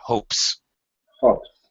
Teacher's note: Oh, I think this may be the first time we've run into a word that ends with P. P is unvoiced. P, just air, no voice. So it's an S sound.